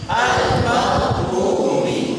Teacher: Ini satu makhraj yang memang sedikit miring, miring dia menempel ke sampingnya